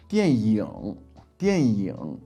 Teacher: Now often you would hear 电影 or 电影, like a y sort of sound thrown in there. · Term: y sound